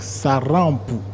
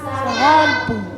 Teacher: le mot sarampo, c'est avec un R roulé